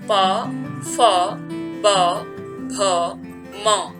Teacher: पवर्ग के अंतर्गत प, फ, ब, भ, म ये होंठों का स्पर्श करते हुए उच्चारित किए जाते हैं